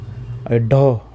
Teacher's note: ड, अब ड बोलेंगे तो सीधा आपके मुंह से निकल रहा है कम हवा में, और कम हवा में और अघोष निकल रहा है, मतलब कंपन कम हो रही है, कंपन भी कम है और हवा भी कम निकल रही है। ड ढ, ढ होता है कंपन भी ज़्यादा हवा भी ज़्यादा निकलती है